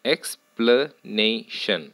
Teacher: again four syllables third syllable has primary stress first syllable has secondary stress